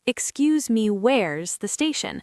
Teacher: The X sound is often like a X sound, and the me is quite short. Also, where is often blends together, almost sounding like where's